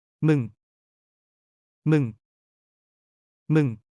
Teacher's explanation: Like mong with a falling tone. This is the rude version of you that's typically used with goo.